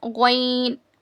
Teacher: हलक के ऊपर वाले सूखे हिस्से से ग्वाइन अदा होता है. It is pronounced from the top dry portion of your throat.